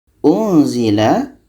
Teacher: nun mati bertemu za, ikhfa hakiki dan dibaca dengung